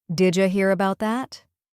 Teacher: Did you becomes did ya again. This is super common and totally natural in fast English.